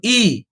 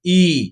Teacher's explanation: যখন ছোট ই বলবো তখন ই, কিন্তু যখন বড় ই বলবো, দীর্ঘ ই বলবো, তখন সেটা টাইমটা দ্বিগুণ করব